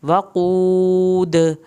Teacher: وقود واو کی زبر اور قاف یہاں پہ پر کر کے پڑھا جائے گا، واو ساکن کو کھینچا جائے گا اور آخر میں دال پہ کلکلا کرنا ہے۔